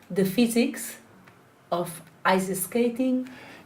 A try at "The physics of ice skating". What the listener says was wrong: You're pausing between the S. It's in a one chunk. It's one name.